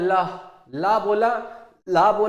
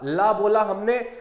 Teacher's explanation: ला बोला तो हमारी जीभ जो है ऊपर टच हुई और हवा जो है ये बगल से निकल गई ना जीभ से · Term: पार्श्विक व्यंजन